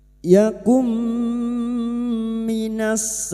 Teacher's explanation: Idgham bighunah. Masuk pada huruf berikutnya yaitu huruf mim dan mendengung selama tiga harakat. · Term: idgham bi gunah